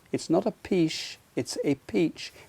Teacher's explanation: And yet when you see the spelling, CH, you might think that that is going to be pronounced CH, sh, but it's not. It's got a T sound before that final CH.